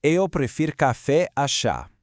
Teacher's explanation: The absolutely crucial point is that unlike a lot of the other verbs we're looking at today, the stress unexpectedly falls on the back half of the word. You start off kind of light with pre, like in the word pretend, and then you land firmly on that second syllable, ferir.